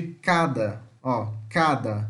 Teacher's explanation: o ca por exemplo é uma oclusiva velar surda